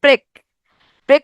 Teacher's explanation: মাঝখানে একটা এ ধ্বনি আসছে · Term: মধ্য স্বরগম